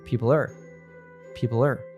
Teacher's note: the L sound at the end of people connects smoothly to the reduced R, and it sounds like people-er, people-er.